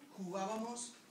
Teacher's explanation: the G is between vowels, and the G's between vowels are very soft